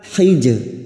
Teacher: Jim sukun yang mati asli di tengah kalimat qalqalah sugro. Jangan lupa dipantulkan.